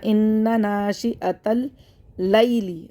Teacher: تا کو لام سے ملا دیں گے، حمزۃ الوصل گر جائے گا